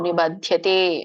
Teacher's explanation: ದ ಮಾತ್ರ ಮಹಾಪ್ರಾಣ ಇದೆ ಮತ್ತೆ ಯ ಕೇಳಿಸಬೇಕು